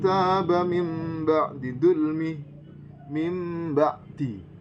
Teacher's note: menukar atau mengganti nun atau tanwin menjadi huruf mim